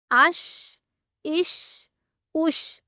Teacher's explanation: जब हम शीन बोलते हैं तो ऊपर वाले तालू के साथ बिल्कुल भी हमारी जुबान नहीं लगती। थोड़ा सा उसमें गैप रहता है। जहां से हवा गुजरती है।